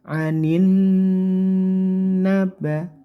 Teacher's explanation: lam asyamsiyah enggak usah dibaca langsung ke huruf nun saja Nun yang bertasdid didengungkan sekitar tiga harakat atau tiga hitungan